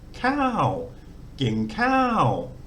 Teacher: So Kor Kai again, high class initial K consonant, long vowel, but it's got the second tone mark, so that combination gives it a falling tone, but it's long. So energy into the front of the word, let it fall off, but long.